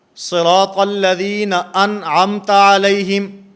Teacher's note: نون ساکن کے بعد یہاں پر حروف حلقی میں سے عین آ رہا ہے، اس بنیاد پر یہاں غنہ زمانی نہیں ہوگا